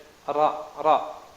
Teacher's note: Jadi lisannya itu makhrajnya kan ujung lisan dengan langit-langit bagian depan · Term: huruf ro